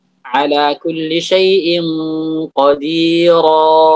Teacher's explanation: Memanjangkan alif dengan panjang 3 harakat atau lebih.